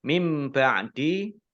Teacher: nun sukun bertemu dengan huruf ba, bacaan iqlab, dibaca memantul, dibaca membalik. Baknya dibaca mim terlebih dahulu